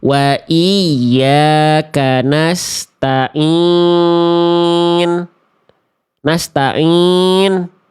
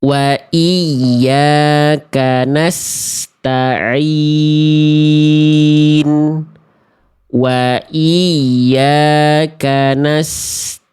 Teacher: Masuk ke dalam rongga hidung sehingga mengakibatkan ain yang sengau, ain yang bindeng, ain yang ngirung.